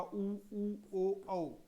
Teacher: ओष्ठ जो है वो गोल हो जाते हैं, इसलिए इनको वर्तुल स्वर कहते हैं